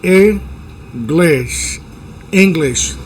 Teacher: Los dos sonidos son la i del español cortito.